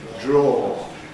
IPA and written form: dɹ̝ɔː (draw)